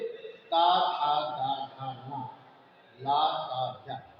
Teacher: ता था दा धा ना, ला सा जा, ये दांतों से बोले जाते हैं।